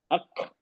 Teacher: काफ और ता, सुकून में भी हम्स में हम्स होगा, लेकिन शॉर्ट हम्स।